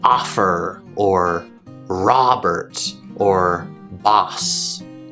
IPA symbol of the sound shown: ɑ